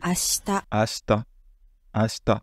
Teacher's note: le i, entre guillemets, saute, parce qu'en fait, il est dévoisé. On ne dit pas ashita, on dit ashita.